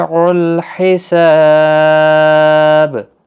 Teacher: الحساب ہا وسط حلق والا ہے، سا الف مدہ ہے، اور جب وقف کی صورت میں با ساکن ہوگا تو اس پر قلقلہ بھی ہوگا